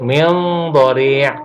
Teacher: tapi bukan dibaca masuk, hanya dibaca samar. Dia adalah ikhfa.